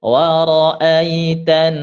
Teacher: huruf nun tasydid didengungkan yang lama